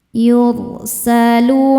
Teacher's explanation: ro sukun dibaca secara tafkhim karena didahului dommah cara bacanya ditebalkan